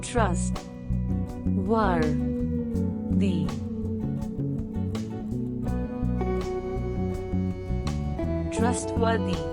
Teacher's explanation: 3 syllables, and the emphasis on first syllable